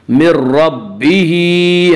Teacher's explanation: من ربہ، ہا کے نیچے کھڑی زیر ہے، کھڑی زیر قائم مقام ہے یا مدہ کے، اس لیے کھڑی زیر کو ایک الف کے برابر کھینچ کر پڑھیں گے